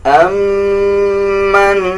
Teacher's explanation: میم کے اوپر شد ہے، غنہ کیا جائے گا